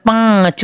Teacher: पांच बोलिए तो नाक और गले दोनों में से आवाज आएगी, तो उस पर लगेगा अनुनासिक।